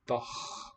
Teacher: That's a velar ch. KH here. نط.